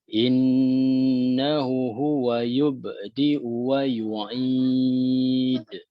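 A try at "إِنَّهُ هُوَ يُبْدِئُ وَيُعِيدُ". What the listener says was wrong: Innahu panjang ya.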